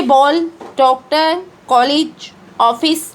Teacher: ओ की ध्वनि आ और ओ के बीच की होती है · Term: ओ ध्वनि